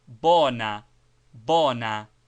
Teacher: quite without the short ooh sound frequently heard with the English vowel in such words as note boat. Its sound is almost equivalent to o in core pronounced shortly and with the lips placed roundly as if we're saying o as est po as in English.